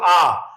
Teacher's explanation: ठीक है, तो जिन स्वरों के उच्चारण में जीभ का पिछला भाग उठता है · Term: पश्च स्वर